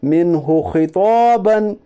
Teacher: نون ساکن کی آواز کو ظاہر کر کے بلا گنا کے جلد پڑھیے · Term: اظہار حلقی